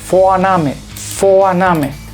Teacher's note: Cuando encontramos en alemán una V al principio de las palabras, la F es muy sonora. O sea, la V en alemán se lee como un sonido F y muy fuerte, o más que fuerte, que es muy claro.